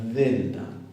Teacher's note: D suavecita interdental, sonora, que uno la puede alargar tanto como le dé el aire.